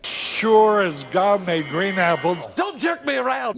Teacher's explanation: he really doesn't send a lot of air through his nose so it's almost like when you're stuffed up and you don't